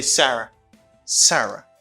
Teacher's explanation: it's a falling intonation because you lower your voice at the end of this sentence.